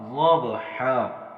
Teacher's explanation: حا کے اوپر دو زبر ہیں، وقت کی صورت میں ہم ایک زبر الف کی مقدار پڑھیں گے